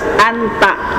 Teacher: makhraj nun itu ada di ujung lidah, nempel ke gusi gigi seri atas